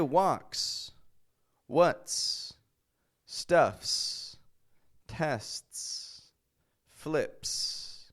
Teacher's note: It's just air coming out, like the letter S, unvoiced. And so when you put an unvoiced letter beside S, the S just remains a regular S.